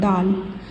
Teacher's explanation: दाल बोलेंगे हम लोग तो ये ज़बान ऊपर दांतों पर लगेगा और थोड़ा माउथ ओपन करेंगे, दाल। नेक्स्ट है ज़ाल को अदा करने के लिए हम लोग थोड़ा सा ज़बान को बाहर निकालेंगे चावल के दाने के जितने के बराबर। · ऊपर की दांतों पर लगाने से और थोड़ा माउथ ओपन होगा तब हमारा दाल का मखरज अदा होगा